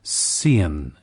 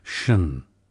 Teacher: Fuller soundings of S-I-O-N and T-I-O-N spellings, sian instead of shun.